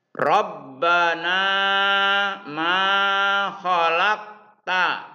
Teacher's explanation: Nah, dengan ma itu sama panjangnya karena dia mad tabi'i. Qalqalah sugro karena qafnya mati di tengah.